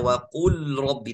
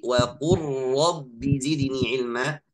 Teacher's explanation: kalau mau baca langsung masuk ra, tidak ada lam. · Idgham kamil itu lengkap. Karena huruf lam itu sudah masuk total 100% dalam huruf ra. Jadi lamnya itu dianggap tidak ada ya, walaupun ditulis di dalam Al-Quran begitu.